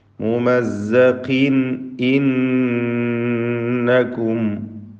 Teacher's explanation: തൻവീനിനെ ഇൽഹാർ ഹൽക്കി നൽകി മണിക്കാതെ വെളിവാക്കണം.